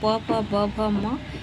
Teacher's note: इसके अलावा जो प वर्ग है प ब भ म ये होठ से उच्चारण किए जाते हैं। दोनों होठ मिलते हैं तो इन्हें ओष्ठ ध्वनियां कहते हैं।